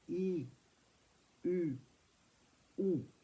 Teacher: le ou plutôt au fond de la bouche